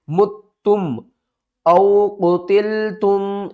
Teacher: میم کے اوپر گنہ کریں گے، تا کے اوپر سختی کریں گے